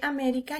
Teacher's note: américa última penúltima y antepenúltima vemos que américa lleva así la lleva acento en la antepenúltima entonces es una palabra esdrújula